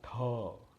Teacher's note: त मध्ये थ मिसळला म्हणजे यात ह मिसळला, म्हणजे याला महाप्राण वर्ण म्हणतात. मग महाप्राण आणि अल्पप्राण असे सुद्धा या वर्णमालेचे आपण भाग केले, ज्याच्यामध्ये श्वास म्हणजे ह नाही आहे, हला श्वास सुद्धा म्हणतात, तर तो नाही आहे त्याला अल्पप्राण म्हणतात.